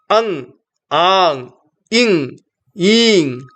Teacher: these are uttered by the mouth in association with the nasal cavity, the nose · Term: Anunasika Swaras